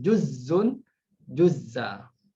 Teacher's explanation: Yang ini diidghamkan. Hamzah itu menjadi zai, jadi ada double zai, kemudian diidghamkan.